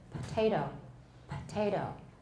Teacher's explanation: it became voiceless because of the the initial consonant the initial stop was voiceless